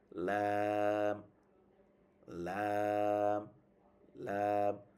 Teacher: জিহ্বার আগার কিনারা, এই যে আগা হচ্ছে জিহ্বার আগা সামনটা আর কি, কিনারা উপরের মানে দাঁতের মাড়ির সাথে দাঁতের গোড়ার সাথে লাগায়, সামনের বরাবর যে উপরের দাঁত এই সাইডে লাগালে লাম লাম লাম।